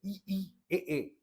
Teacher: अग्र स्वर जिसके उच्चारण में जीभ का आगे का भाग प्रयोग होता है।